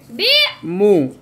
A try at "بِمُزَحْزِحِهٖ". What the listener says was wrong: ملاؤ بی کیوں کرتے ہو سیدھی آواز رکھو بی مو